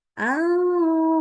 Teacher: A-nya jangan tebal ya. Al-qa di situ hati-hati hamzahnya nggak boleh ikutan tebal. Ya, A-nya tetap tipis.